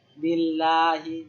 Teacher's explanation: যখন আল্লাহ শব্দের লামের পূর্বে আমরা কাসরা জের পাব তখন কি উচ্চারণ হবে? পাতলা উচ্চারণ হবে।